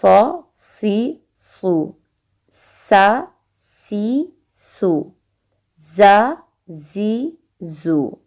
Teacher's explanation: زا کو زال سے نہیں ملانا۔ صاد، سین، زا حروف صفیریہ کہلاتے ہیں، اور سیٹی والے حروف بھی ان کو کہتے ہیں